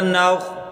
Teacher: اگلا حرف نون خا زبر نوخ، خا کو موٹا کر کے پڑھیں۔